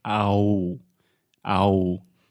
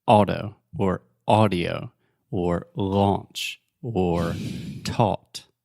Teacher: the point is just one sound ah very similar to the sound in Portuguese like oh